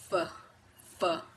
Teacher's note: Fricative are consonants that are formed by stopping the airflow somewhere in the vocal tract and then forcing the air to produce a friction sound with the F sound and V sound. The air is stopped by pushing the bottom lip and top teeth together. The air is then pushed to create the sound.